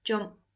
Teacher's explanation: It's an ed, but it makes a t sound.